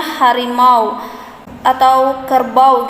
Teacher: dua buah vokal yang berdiri bersama dan pada saat diucapkan berubah kualitasnya